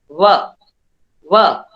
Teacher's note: વ ઓષ્ટ્ય દંત્યોષ્ટ્ય છે, દાંતને લાગીને બોલાય છે. વ, વ એટલે દંત્યોષ્ટ્ય સંઘર્ષી છે.